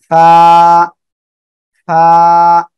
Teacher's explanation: এ অক্ষরটা আপনি যখন উচ্চারণ করবেন তখন নিচের ঠোঁটের পেট, সামনের উপরের এই যে দুটো দাঁত, দুই দাঁত এই নিচের ঠোঁটের পেটের সঙ্গে লাগবে, লাগিয়ে আমরা হালকা বাতাস বের করব, বাতাস বের করে আমরা এ অক্ষরটা উচ্চারণ করব।